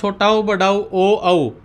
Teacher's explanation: चारों में हमारे बोलते समय हमारे ओठ क्या हो जाते हैं? गोल हो जाते हैं। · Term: ओष्ठ